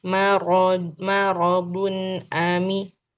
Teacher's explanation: Dun di sini izhar, jadi tidak ditahan lama.